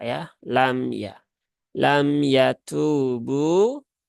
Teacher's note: Lam yatubu, nah, maka itu kurang sesuai ya, karena mim sukun itu sifatnya bukan syiddah ya, tapi sifatnya dia adalah tawasut, sama dengan lam sukun